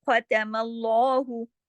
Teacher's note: ख़तमल्लाहु, अब यहाँ पे जब मल्लाहु इस तरह से पढ़ेंगे, तो ये लाम अल्लाह के नाम में ये लाम मोटा हो जाएगा